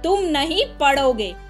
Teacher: इस वाक्य में नहीं पर जोर दिया गया है। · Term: शब्द बलाघात